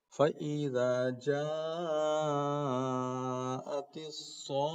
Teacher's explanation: اس پر غور کیجئے اور اس پر غور کیجئے کیسے ہم پڑھ رہے ہیں، فَإِذَا جَاءَتِ الطَّامَّةُ الْكُبْرَىٰ، پھر اس کے بعد فَإِذَا جَاءَتِ الصَّاخَّةُ، گول لتا ہے، رکیں گے تو ہاں بنا دیں گے، اور صاد کو پورا کھینچیں گے اور اس کے بعد خا سے ملائیں گے